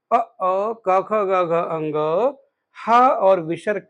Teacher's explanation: अ क ख ग घ अंग ह और विसर्ग का उच्चारण कंठ से होता है।